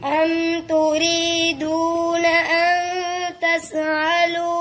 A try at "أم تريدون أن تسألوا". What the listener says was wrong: ये तस कलकला कर दिया आपने तस